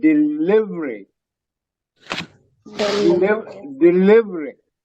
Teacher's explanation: That second E, VERY, is pronounced very softly, not stressed. So it's pronounced delivery.